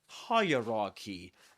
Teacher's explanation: we say hierarchy, and the accented syllable is the first one. This one, higher.